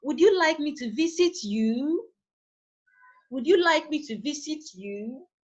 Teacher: the tone of my voice is raised at the end of the focus word after the question mark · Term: rising tone